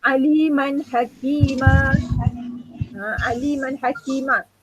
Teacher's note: Bila berhenti terbaca dengan kadar 2 harakat. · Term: mat iwad